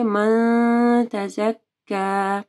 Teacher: نون ساکن ہے، ٹھیک ہے، اس کے بعد تا ہے تو تا جو ہے اخفاء حروف میں سے ہے تو یہاں پہ اخفاء غنہ ہوگا، یعنی ہم لوگ نون کو چھپائیں گے